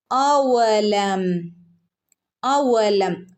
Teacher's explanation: വാവിനെ പ്രത്യേകം ശ്രദ്ധിക്കണേ, ചുണ്ടു കൂർപ്പിച്ച് പറയണം കേട്ടോ. അവലം, മീമിനെ ഇവിടെ വ്യക്തമാക്കി ഓതുക.